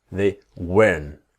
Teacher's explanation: But of course, the T is silent. Now this is the N sound, the strong N, the weren.